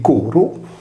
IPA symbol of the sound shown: ɾ